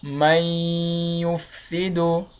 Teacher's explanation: دا نون ساکن دا په یا کې مدغم کیږي، له دې څخه یو شد لرونکی توری جوړیږي، نون ورکیږي، میم د یا سره تړل کیږي. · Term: ادغام